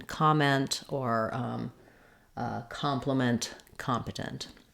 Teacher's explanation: in competent, we have first syllable stress. So you want to make sure that you have a clear ah vowel.